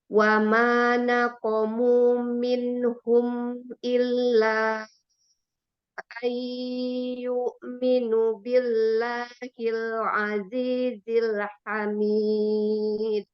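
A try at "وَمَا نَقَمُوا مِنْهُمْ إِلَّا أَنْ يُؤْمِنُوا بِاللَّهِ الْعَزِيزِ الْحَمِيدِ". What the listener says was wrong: Kol-kolahnya lupa ya. Hamid.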